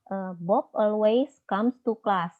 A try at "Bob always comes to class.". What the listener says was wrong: Comes. Tolong sampai S-nya keluar. Bob always comes to class.